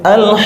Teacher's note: qf itu ada di Pangkal lidah ya termasuk huruf istilla yang berat